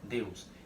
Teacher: Esse E tá descendo para o U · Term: ditongo decrescente